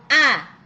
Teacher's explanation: Kenapa disebut huruf halq karena tempat keluarnya huruf tadi itu atau makhrajnya tempat keluarnya huruf tadi itu berasal dari tenggorokan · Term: huruf halqi